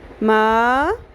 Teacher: زبر کے ساتھ الف، مد اصلی ایک الف کے برابر لمبا کرنا ہے